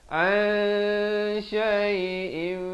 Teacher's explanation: Ain baris atas bertemu nun memang asalnya bunyi an. Tapi bila datang shin disamarkan kadar panjang dua harakat. An syai'in. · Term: ikhfa